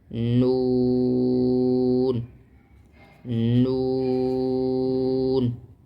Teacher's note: نون کا مخرج زبان کی نوک اوپر کے 2 دانتوں کی جڑوں سے اوپر لگتا ہے